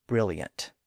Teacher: the word brilliant which most people pronounce with a Y sound near the end